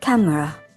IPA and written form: ˈkæm.rə (camera)